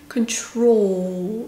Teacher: 그런데 control 같은 경우 control 이렇게 되지 않고요. 왜냐면 L 끝소리가 있기 때문에 그냥 오 소리를 조금만 더 끌어주세요.